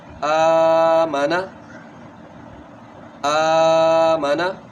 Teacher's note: آ کی آواز کو کھینچا کیونکہ اس کے بعد کھڑا زبر ہے.